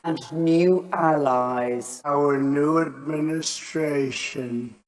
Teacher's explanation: Oh, say The word yod describes a y sound. In the word new, Brits will tend to pronounce a y sound here, new. But Americans don't. They've dropped the yod.